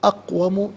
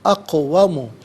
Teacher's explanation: اقوم میں قاف ساکن ہے لیکن حرف قلقلہ ہے، تو آواز لوٹتی بھی محسوس ہونی چاہیے